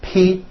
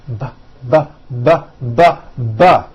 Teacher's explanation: They are produced exactly the same way here in your mouth, but the P sound has no voicing and the B sound, b, b, does have voicing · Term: paired consonants